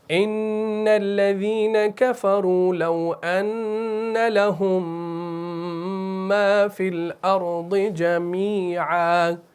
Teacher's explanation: یہاں پر جو میم آپس میں مل رہا ہے نا تو یہ ایک میم بن رہا ہے. دیکھیے اصل میں یہ ہے لہم اور آگے پھر ہے ما، ایسے ہے نا. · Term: ادغام